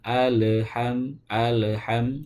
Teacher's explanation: lamnya sendiri itu bukan huruf qalqalah yang harus dipantulkan ya. Maka tidak boleh ketika membaca huruf lam itu diseret atau dipantulkan.